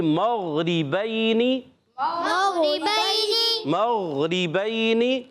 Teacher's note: غین حرف مستعلیہ میں سے، حلق کے اوپر والے حصے سے غین اور خا ادا ہوتے ہیں. موٹا رکھنا ہے، پر رکھنا ہے، آواز جاری رہے گی.